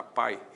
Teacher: O a é vogal, o i é semivogal, ditongo decrescente